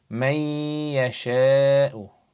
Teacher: you have a noon sakin with a ya, so you join them together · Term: joining